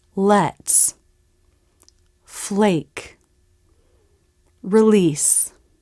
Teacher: the l is a light l when it comes before the vowel or diphthong in a syllable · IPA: [l]